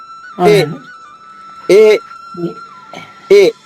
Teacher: కంఠములోనూ తర్వాత ఆ దానికి కొంచెం పై భాగం ఆ రెండు కలిస్తేనే గాని ఏ రాదు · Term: కంఠము తాలవ్యము